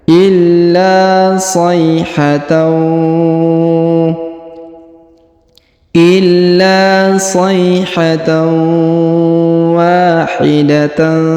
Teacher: Sayhatan, kemudian huruf tanwin an pada huruf tan bertemu dengan waw bertasdid, maka tanwinnya dihilangkan atau dileburkan ke huruf waw bertasdid ya. Ditahan dan ditekan serta didengungkan